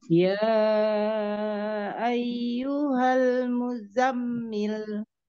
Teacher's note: Zanya nggak panjang, mi langsung ke mim. Yanya 4 sampai 5 harokat ya.